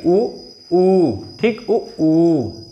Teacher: तो ये ओष्ठ से बोला जाएगा, ओठ को गोल करके बोलना पड़ता है। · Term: ओष्ठ्य